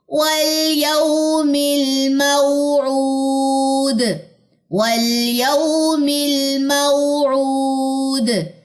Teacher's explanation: मऊद, द ये sound में कलकला आना चाहिए